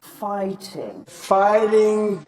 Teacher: Americans would use a tap this may sound like a short D sound or even an R sound